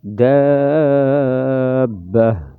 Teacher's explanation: گول تا وقف میں گول والی ہا بنے گی اور وقف میں ہا کو ظاہر کریں گے لیکن جھٹکا نہیں دیں گے